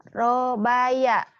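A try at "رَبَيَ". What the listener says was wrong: Nggak ada yang panjang.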